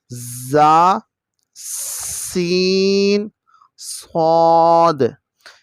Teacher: عربی میں سیٹی کو صفیریہ کہتے ہیں اور 3 حروف ہیں، یہ سخت ہیں، ان میں آواز سیٹی کی آتی ہے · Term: سیٹی والے حروف